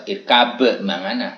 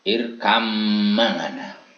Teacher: Ini tidak boleh kita baca irkab mangana, tapi kita harus mengidghamkan ya, karena itu antara bak mati dengan mim ini adalah huruf yang satu jenis makhrajnya, sehingga membacanya meskipun tulisannya irkab mangana, kita membacanya harus irkam mangana.